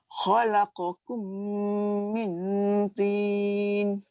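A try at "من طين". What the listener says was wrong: Lidah aja melekat kat langit ni. Angkat lagi.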